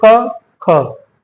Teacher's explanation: अघोष वर्ण वो होते हैं वे ध्वनियां जिनका उच्चारण करने पर तंत्रिकाएं हमारी कंपित नहीं होती हैं